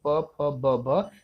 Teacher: प, फ, ब, भ जब दोनों होठ आपस में मिलेंगे तभी इसका उच्चारण कर सकते हैं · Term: ओष्ठ